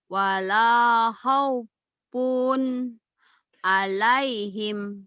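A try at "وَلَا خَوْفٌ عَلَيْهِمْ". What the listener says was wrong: Tuh, punnya belum berani ngelepas. Padahal yang namanya tanwin ketemu ain ini namanya idhar. Wala khaufun alaihim. Wala khaufun alaihim. Wala khaufun alaihim.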